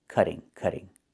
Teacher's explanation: Not cutting, but cutting. And in America, we change the T to a fast D when it's between vowels